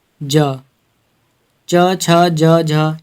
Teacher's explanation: ज, च, छ, ज, झ ये सभी हमारे स्पर्श संघर्षी व्यंजन हैं